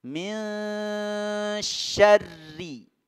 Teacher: Ya, sya-nya kemudian di depannya ada ra berbaris, ada tasdid. Jadi didobelkan huruf ra-nya.